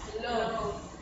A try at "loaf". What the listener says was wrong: There you go. Now you got it.